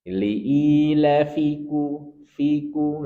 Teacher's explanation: Maka fi di sini jangan sampai dipanjangkan karena sering kita temui liilafi harus pendek. Liilfiku fiku langsung masuk ke qof.